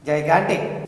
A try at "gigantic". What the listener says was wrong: Yes, you are right.